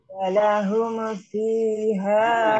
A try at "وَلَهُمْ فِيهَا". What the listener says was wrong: Hukumnya hati-hati jangan cepat-cepat ya. Walahum fi, tidak boleh. Walahum fi harus jelas bunyi amnya. Bunyi amnya jelaskan. Tapi jangan terlalu lama. Walahum fi fiha.